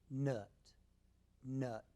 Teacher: uh is made with a medium open mouth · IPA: /ʌ/